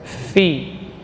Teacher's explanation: perut bibir bawah bagian dalam menempel pada ujung gigi seri atas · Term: fa